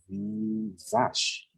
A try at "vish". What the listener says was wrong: You just got the vowel. So vish, exactly.